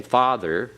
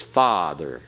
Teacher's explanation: it'll be a longer ah sound